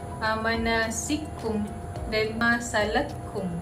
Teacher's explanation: Imam As-Susi akan mengidghamkan huruf kaf yang pertama ke dalam huruf kaf yang kedua. So dia akan berbunyi manasikum dan masalakum.